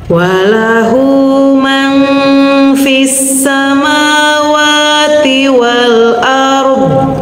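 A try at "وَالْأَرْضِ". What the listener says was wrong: nah rudon ya wal ard donnya ada nah karena ada sifat istitolah yang memanjang wal ard. Jadi jangan diputus wal ard.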